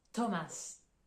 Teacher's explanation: ici la prononciation du h on l'entend pas en fait ça va uniquement être le T qui sera prononcé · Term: son t